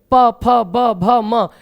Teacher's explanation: ये ओष्ठ से उच्चारित होते हैं, ओठों की सहायता से उच्चारित होते हैं। तो ये पांचों अक्षर ओष्ठ से उच्चारित किए जाते हैं तो इनका उच्चारण स्थान ओष्ठ माना जाएगा।